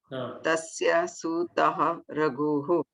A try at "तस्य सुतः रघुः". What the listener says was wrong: सुतः. न ह्रस्व. सुतः. सूतः न सुतः.